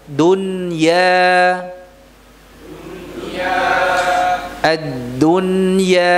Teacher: Ya-nya murni, tidak ada dengungnya. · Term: izhar mutlak